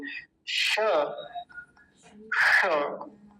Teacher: यह तालू से बोला जाता है जहां से च छ ज झ बोले जाते हैं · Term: तालव्य सकार